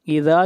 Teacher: اذا کے اوپر مد منفصل ہے، اس مد کو 3 الف کے برابر کھینچ کر پڑھیں گے۔